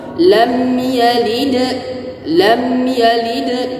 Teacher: mim sukun di sini tidak berlaku hukum gunnah ataupun samar. Jelas izhar syafawi. Lam yalid, lam yalid, jangan didengungkan, jangan lam yalid ya.